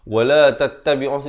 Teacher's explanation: jadi alif lam syamsiah, jadi lamnya tidak dibunyikan.